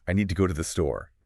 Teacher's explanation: You're listening for a clear oo sound in to, but what you're actually hearing is this almost inaudible T sound. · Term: weak forms